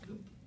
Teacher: that lovely unaspirated p at the end